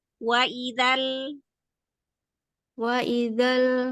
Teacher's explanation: Lidah makhraj lamnya jangan dilepas dulu sebelum pindah ke ai.